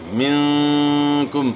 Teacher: نون ساکن کے بعد اخفا کے 15 حروف میں سے کاف ہے تو یہاں اخفا کے ساتھ آپ نے غنہ کرنا ہے اور میم ساکن میں اظہار کرنا ہے.